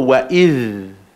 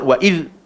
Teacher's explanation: Dia tak boleh sangkut. Waiz dia tak boleh tersekat. Dia tak boleh syidah. Dia kena rakhawah.